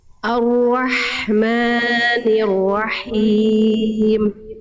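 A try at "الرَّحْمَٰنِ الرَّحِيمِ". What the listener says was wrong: Ma-nya jangan kepanjangan. Ma dua harokat. Ar-Rahmanir-Rahim.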